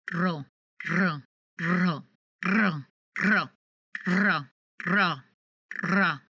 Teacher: the tip of the tongue touches the ridges, the bumps in your mouth, and it bounces back and forth, up and down, more than once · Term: double R